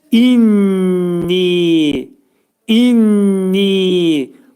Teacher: nun hərfi sıxılacaq bir-birinə. Burunda deyiləcək iki saniyə miqdarında və uzadılacaq.